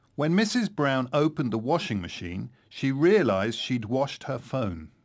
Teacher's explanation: so had is shortened to just a d sound